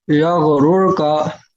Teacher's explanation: यगरू का यगरुर का, यगरूर का ये रा बारीक है पुर है? पुर है मौलवी साहब, हाँ पुर है। क्यों पुर है? क्योंकि रा साकिन से पहले पेश है।